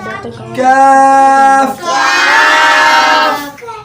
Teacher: کاف منہ کی طرف ہٹ کے ہے اور باریک اس کو ہم نے پڑھنا ہے